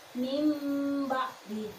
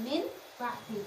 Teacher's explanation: mengganti tanwin dan nun mati menjadi mim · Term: iklab